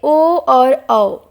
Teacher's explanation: ओ और औ कंठोष्ठ हैं, क्योंकि उनका उच्चारण कंठ और ओठ दोनों से मिलने से होता है